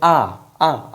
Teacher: जब इनका उच्चारण किया जाता है तो उसमें हमारा मुख पूरा खुल जाता है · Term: विवृत स्वर